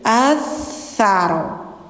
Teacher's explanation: Lidah ujungnya ditempel di gigi atas. Jadi kayak digigit gitu.